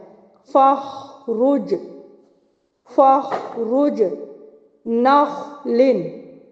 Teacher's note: ख के ऊपर जब साकिन हो तो इसको भी आपने आवाज को चलाना है। और यह पुर पढ़ा जाएगा। हरूफ मुस्तालिया में से है।